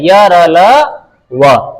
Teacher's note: यह व्यंजन जब अपन श्वास के द्वारा बोलते हैं तो ज्यादा अवरोध नहीं होता है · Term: अंतस्थ